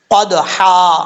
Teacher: قدحا، دال حروف قلقلہ میں سے ہے، قلقلہ ہوگا، اور آگے جو ہے وہ ہا آ رہا ہے، یہ ہا باریک ہے